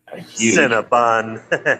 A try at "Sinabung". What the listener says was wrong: Sinabung with an S, not a C.